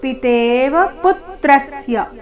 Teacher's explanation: ಪು ಮತ್ತೆ ತ್ರ ಮೇಲೆ ಆಘಾತ